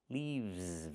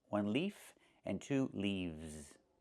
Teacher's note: We use the letter V and pronounce it VV plus the S making a Z sound like in zebra. Leaves. One leaf with the F sound with no voice.